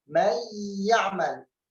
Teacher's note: أدخلنا النون في الياء فأصبح كأنه حرف واحد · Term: الإدغام